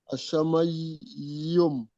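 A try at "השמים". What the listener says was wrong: Non, non, non, c'est un i. Voilà. Hachamaïm.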